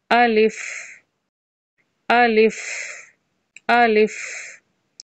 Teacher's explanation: अलिफ जो है उसका कोई मखर नहीं होता यानी कि यह मुंह के खाली हिस्से से अदा होता है